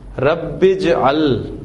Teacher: حمزۃ الوصل ہے، ملا کر پڑھیں گے، لکھنے میں رہے گا، پڑھنے میں نہیں آئے گا